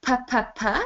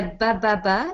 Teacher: Donc, si on prend l'exemple du « pb », donc le « ppp », c'est un son sourd, et le « bbb », c'est un son sonore. Donc, les deux, le placement est le même à l'intérieur de la bouche, sauf que un, on n'utilise pas les cordes vocales, et l'autre, on utilise les cordes vocales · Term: consonnes sourdes et sonores